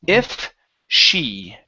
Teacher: I want you to pause in between if and she so you can pronounce it sh because right now you're pronouncing an S